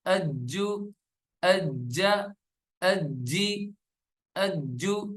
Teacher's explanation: حمزہ جیم زبر اج، جیم پیش جو، اجو، اجا، اجی، اجو. جیم جو ہے وہ قلقلے والے حروف میں سے ہے تو جیم پہ قلقلہ کریں گے